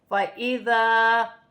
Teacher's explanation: الف سے پہلے زبر ہے تو الف مدہ بنے گا، ایک الف کی مقدار کھینچ کر پڑھا جائے گا